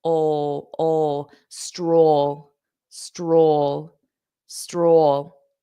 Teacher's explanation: You have that dark L.